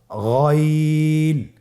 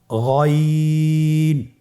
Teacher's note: গইন হরফটি উচ্চারিত হয় কণ্ঠনালীর শেষ ভাগ হতে।